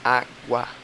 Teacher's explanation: a semivogal, normalmente, a gente pronuncia mais baixo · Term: ditongo crescente